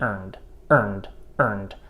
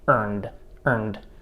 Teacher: you hear that light release d sound · At the ends of words, we still do a light release D sound.